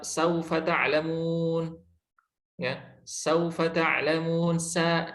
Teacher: sa, tipis, dia rileks, si lidahnya itu datar, ya. Istifal, asfal, dia di bawah si lidahnya itu, pangkal lidahnya berada di bawah.